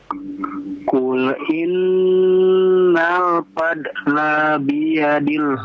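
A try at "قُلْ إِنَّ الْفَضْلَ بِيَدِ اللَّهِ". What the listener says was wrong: Masih. La-nya jangan dipanjangkan. Fadla biyadillah.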